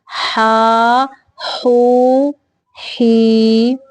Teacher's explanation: ہا کی ادائیگی کے وقت سانس کو باہر نکالنا ہے، یعنی حلق کے درمیانی حصے سے ہا ادا ہوتا ہے، وسط حلق۔